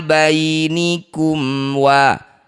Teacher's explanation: baca jelas bunyi mim, rapatkan bibir dengan sempurna tanpa dengung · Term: idhar syafawi